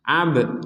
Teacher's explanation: Nah, kalau seperti ini faktu, nah ini faktu, ini sekedar sukun dan tidak ada pentalan sama sekali. Kalau ini ada pentalan, ab seperti itu.